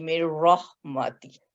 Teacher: نون جو ہے اس کو بالکل ڈراپ کر دیں گے اور ہم میم کو را سے ملا کے پڑھیں گے